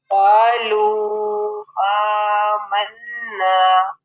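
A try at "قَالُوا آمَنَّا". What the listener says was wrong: आ को ज़्यादा नहीं खींचेंगे, इसको सिर्फ एक अलिफ के बराबर।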